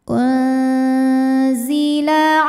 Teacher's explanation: bunyi nun sukun disamarkan menuju makhraj huruf zai disertai bunyi dengungan. Bunyi samar dan dengungannya sama ya. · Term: ikhfa awsat